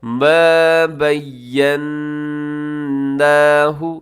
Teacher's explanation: یہاں نون مشدد ہے، یہاں غنہ کیجیے گا۔